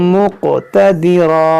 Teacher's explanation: यहाँ क़ाफ में कलकला होगा